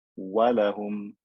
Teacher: Wa, walahum, no teeth are involved at all. It's just the lips coming together. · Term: non-med waw